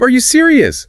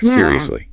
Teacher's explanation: The rising pitch makes it a question expressing disbelief or needing confirmation.